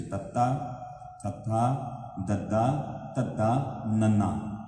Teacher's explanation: ਜੀਵ ਬਿਲਕੁਲ ਦੰਦਾਂ ਦੇ ਪਿਛਲੇ ਪਾਸੇ ਉੱਪਰਲੇ ਦੰਦਾਂ ਦੇ ਟੱਚ ਹੋਏਗੀ